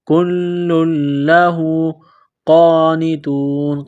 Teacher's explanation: لام کے اوپر تشدید ہے تو لام کو دبانا ہے، سختی کرنی ہے